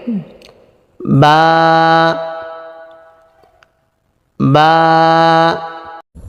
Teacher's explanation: মুখ বন্ধ থাকা অবস্থায় ঠোঁট যেমন মিলে থাকে, মেলানো ঠোঁট খুলে দিলেই হয়ে যায়।